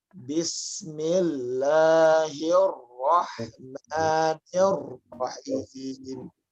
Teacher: Lihat, saya selalu menekan pada huruf-huruf tasydid.